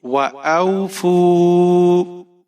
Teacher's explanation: او، فا کے اوپر پیش ہے، واو ساکن ہے، یہاں پر ہم واو مدہ کریں گے، ایک الف کے برابر یہاں پر کھینچ کر پڑھیں گے